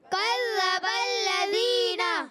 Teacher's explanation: ذال کو ذا سے نہیں بدلنا